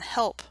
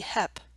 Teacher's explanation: losing the L sound after vowels as in help, which would be hep